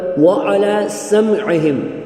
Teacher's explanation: عین کو عین کی طرح حلق سے نکالنا ہے